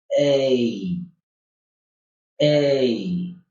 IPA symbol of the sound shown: eɪ